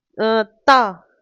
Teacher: ता वर्ग का होता है दंत्य से, यानी कि दांत का स्मित।